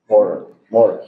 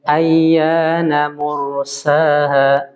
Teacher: Nah, huruf ro sukun didahului dhammah, dia tafkhim tebal.